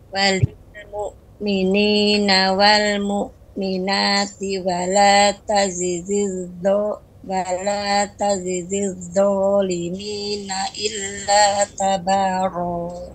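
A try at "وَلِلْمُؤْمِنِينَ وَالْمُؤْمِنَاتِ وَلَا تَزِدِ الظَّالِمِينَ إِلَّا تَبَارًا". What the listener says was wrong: Taib, sudah lumayan, ya, sudah lumayan untuk tebalnya, nanti terus dilatih lagi.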